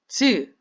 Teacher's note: 혓바닥의 가운데 부분이 입천장의 위쪽 부분에 붙었다 떨어지죠. 즈. 이것도 방해를 받고 나오는 소리가 되겠죠.